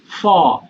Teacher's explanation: এফ যেটা এটা বলছো এটা হচ্ছে উপরের দাঁত নিচের ঠোঁট